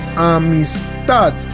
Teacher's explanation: El acento está en la última sílaba, amistad. La sílaba tad llevaría el acento de esta palabra.